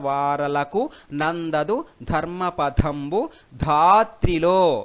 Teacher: ధా అనేది దీర్ఘమవుతుంది లో అనేది దీర్ఘం అవుతుంది. దా అనేది గురువుగా గుర్తించాలి. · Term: దీర్ఘాక్షరములు గురువులు